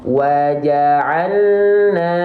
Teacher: kalau tawasud artinya dia enggak tertahan tapi dia enggak betul-betul ngalir